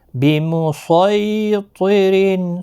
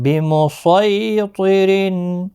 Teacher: صاد مستعلیہ کا حرف پہ موٹا پڑھنا ہے، بِمُصَيْطِرٍ، سین نہیں پڑھنا ہے۔